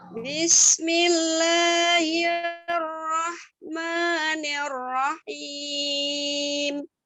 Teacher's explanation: La dengan ma itu sama ya, 2 harokat. Jadi la-nya tidak lebih panjang dari ma, sama. Sinnya didesiskan dulu ya.